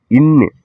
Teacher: நாவின் நுனி அன்னத்தின் நுனியை பொருந்துவதால் பிறக்கும் எழுத்து